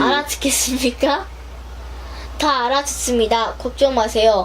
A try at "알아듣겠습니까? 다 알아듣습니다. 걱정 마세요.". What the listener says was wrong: 빨라. 엄청 빨라. 또 빨라졌어.